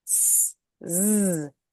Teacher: Same shape, S is unvoiced, Z is voiced.